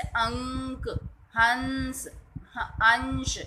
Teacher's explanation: अनुस्वार का उच्चारण करते समय नाक से वायु निकलती है।